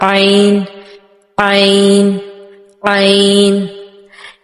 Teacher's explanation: इस लेटर के लिए जितनी ज्यादा निगलने की आवाज फील होगी उतनी ही ज्यादा परफेक्शन आएगी इसकी प्रोनाउंसिएशन में। जितनी ज्यादा निगलने की सी आवाज फील हो इसको अदा करते हुए उतनी ज्यादा परफेक्शन होगी इसकी आवाज में।